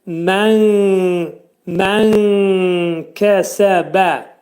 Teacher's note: Kəfin məxrəci dilçəyin sonundadır